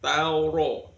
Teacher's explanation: Kemudian di tauro ronya berharokat fathah, maka ronya dibaca tafkhim, dibaca tebal. Tauro ro ri ru.